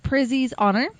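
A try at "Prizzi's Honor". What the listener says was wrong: You got to put the T. I know, but the way you pronounce it, Prizzy's Honor. You got to be hard on it.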